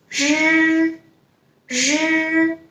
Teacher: when you pronounce it, your tongue is not touching anywhere